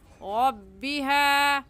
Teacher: ایسے کہیں گے الی ربها میں را کے اوپر زبر آ گیا ہے تو را کو پر یعنی موٹا کر کے پڑھیں گے